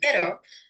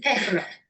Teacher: Spanish speakers will either tap the tip of the tongue to the alveolar ridge as in pero, or roll it as in perro, known as a trill.